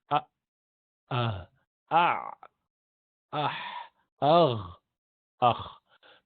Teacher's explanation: سب سے نیچے سے سینے کی طرف جو ہے حمزہ ہا، درمیان میں عین ہا، اس کے اوپر غین خا. تو یہ 6 حروف اس طرح سے نکلتے ہیں: ا، آہ، آ، اح، اغ، اخ.